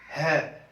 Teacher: बोलने के समय कंठ से ज्यादा आवाज निकलती है